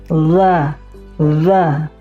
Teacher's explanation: Huruf dza itu bukan merupakan huruf hams. Karena ketika mengucapkan huruf dza harusnya angin tidak dikeluarkan